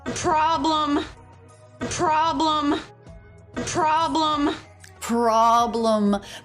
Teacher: the letter O makes the ah as in Father vowel here and the e is a schwa